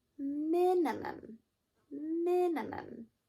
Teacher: Should have heard stress on the me.